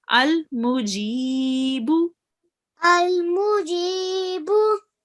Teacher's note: Prolonging the G for 2 seconds and the bu just for 1 second.